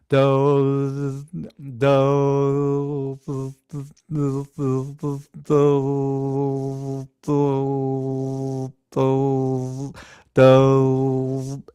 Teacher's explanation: So if I go the D sound, do, or if I go oh, do, so it sounds like I'm bending. You can hear the pitch bend as I bring my tongue almost closed. Do, do, do, do, do.